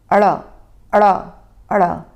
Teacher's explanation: ण और अ का उच्चारण जल्दी से और झटके से किया जाता है। मानो हम मुंह से कुछ फेंक रहे हो। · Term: उत्क्षिप्त व्यंजन